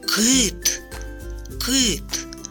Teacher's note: перший звук к це приголосний твердий звук